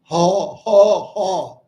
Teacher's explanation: The sound is rattling in the back of the throat almost like controlling snoring.